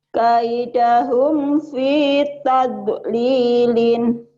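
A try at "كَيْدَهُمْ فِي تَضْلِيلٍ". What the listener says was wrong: Jangan diekan. Jangan tade.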